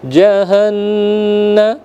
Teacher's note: nun bertasdid ya, wajib al-gunnah. Jadi ditahan selama 2 harakat